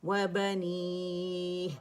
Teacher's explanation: با جو ہے وہ ہونٹوں کے گیلے حصے سے ادا ہوگا